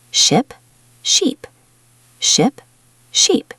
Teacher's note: The first one has a short I sound, the second has a long E sound.